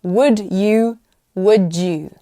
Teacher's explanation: d and y often sounds like j